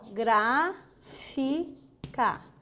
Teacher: terceira sílaba de trás para frente forte tônica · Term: proparoxítona